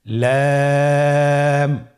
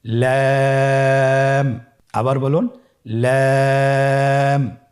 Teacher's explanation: লাম হরফটি উচ্চারণের ক্ষেত্রে অবশ্যই বারিক হবে এবং তিন আলিফ টেনে পড়তে হবে